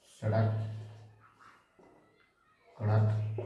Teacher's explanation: इनके उच्चारण में जीभ झटके से मूर्धा को स्पर्श करती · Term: उत्क्षिप्त